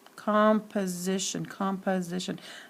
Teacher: In composition, the second syllable, it's not clearly accented. Because the second syllable is not accented, the vowel sound in the second syllable of composition sounds like a schwa